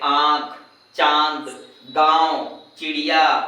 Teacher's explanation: अनुनासिक वर्णों के उच्चारण में नाक से बहुत कम वायु निकलती है और मुंह से अधिक वायु निकलती है